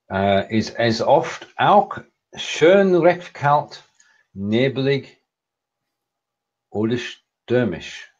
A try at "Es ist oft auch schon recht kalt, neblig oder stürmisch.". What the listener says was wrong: It's not schön. It's schon. Es ist oft auch schon recht kalt, neblig oder stürmisch.